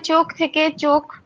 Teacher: খটা মহাপ্রাণী ধ্বনি সেটা খটাকে আমরা ক উচ্চারণ করছি অল্পপ্রাণ হিসেবে উচ্চারিত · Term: ক্ষীণায়ন